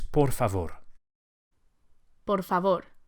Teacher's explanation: Each of the R's is lightly flipped with the very tip of the tongue. Por favor, just behind the front teeth.